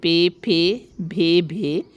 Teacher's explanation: بلبی آواز جو دونوں ہونٹوں کو ملانے سے پیدا ہو